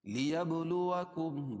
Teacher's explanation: با پر قلقلہ کیونکہ جزم ہے. لیبلوکم میم ساکن کے بعد میم اور با کے علاوہ کوئی اور حرف آئے تو اظہار شفوی ہوتا ہے، اس کو ظاہر کر کے پڑھے گی.